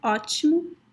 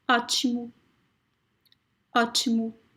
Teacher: pronounce the letter O when you find it at the end of words as a very weak U, U. As in the word that I already mentioned before, ótimo.